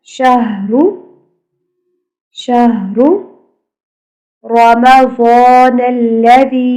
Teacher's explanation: ہا کی آواز کلیئر اور را کو موٹا کر کے پڑھنا ہے